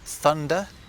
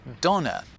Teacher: where English developed a th sound in certain words German went off in a slightly different direction and ended up with a du sound instead